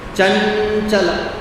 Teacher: it should sound as though it is coming from the nasal sound of the cha varga